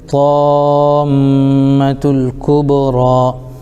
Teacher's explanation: را پر کھڑا زبر ہے، کھڑا زبر برابر ہوتا ہے الف مدہ کہ ان کو تھوڑا کھینچ کر پڑھیں